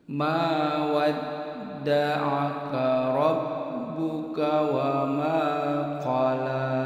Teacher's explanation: Ma ini suara di ayun, ada alif sebelumnya fathah di ayun.